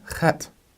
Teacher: With our het, we have a h sound. Back in the back of the throat, kind of like a German Bach, but maybe even a little bit stronger than that. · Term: gutturalness